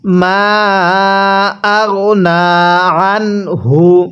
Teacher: এখানে নুন সাকিনের পরে হা আছে, এর জন্য আমরা নুন সাকিনটিকে স্পষ্ট করে পড়ব